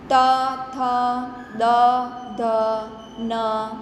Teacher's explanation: દંત્ય વ્યંજન એટલે કે બોલતી વખતે જીભ દાંતને અડે છે.